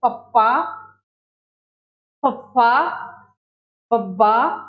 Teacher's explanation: Number 5 होठी धुनियां। इन्हां नूं उचारण समय साडे जिहड़े दोने बुੱਲ ने आपस में जुड़ जाते हैं